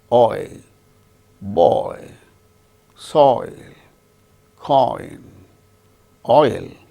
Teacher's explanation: another diphthong or double vowel sound, oi, starts with O, ends with E